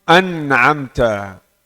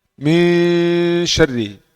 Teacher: masih ada suara nun tapi suaranya samar. Itu maksudnya ya bihalatin bainal izhar wal idgham.